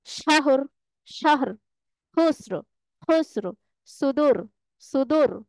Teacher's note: যেই রটাকে আমরা ওয়াকফ করব, এই রকে পড় বা মোটা করে পড়তে হবে।